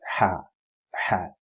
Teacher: ha comes from the middle part of the throat